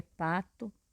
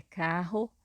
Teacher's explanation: Quando uma palavra terminada em O, em uma sílaba átona, que é uma sílaba fraca, né? É comum pronunciar esse O como se fosse U.